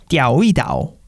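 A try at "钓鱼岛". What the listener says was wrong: 성조가 다 틀리는데 아무튼 띠아오이다오.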